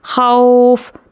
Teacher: वाव पर जज़म और उसके पहले ज़बर वावलिन नरमी से जल्द अदा करेंगे